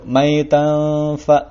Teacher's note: Lalu maitan fa. Nah, di sini ada tanwin bertemu dengan fa, hukumnya adalah ikhfa, dibacanya dengung.